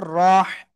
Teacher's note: রহ জবর রহ, গলা চেপে পড়তে হবে।